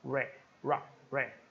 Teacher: Se com o H eu disse hat, hat, chapéu, com o R eu vou dizer rat, rat, tá? Então o R vai ser sempre vibrado